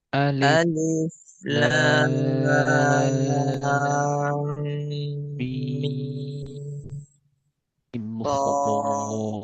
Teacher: Lam 6 harokat, mim 6 harokat, sod 6 harokat.